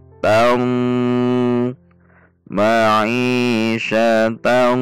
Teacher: Sama seperti huruf sad, huruf bad juga memiliki karakteristik tebal karena merupakan huruf isti'la, sehingga dengungnya juga terdengar tebal, gunnah yang tebal, bukan dibaca tam tam tam, tapi terdengar lebih tebal